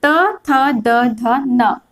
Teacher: इसका उच्चारण देखते कहां से होती है, तो ये होती है दंत से। ठीक है, जब हम त, थ, द, ध, न बोल रहे हैं तो जीभ है जो हमारे दांत के पीछे टकरा रही है